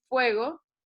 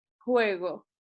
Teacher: hoy en día en español se hace con diente y labio, y en latín el sonido se hacía con los dos labios, no con el diente